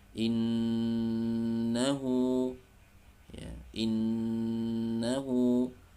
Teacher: didengungkan dari suara al-khayshum atau hidung ya, karena bacaan gunnah salah satunya adalah nun bertasydid itu dari suara hidung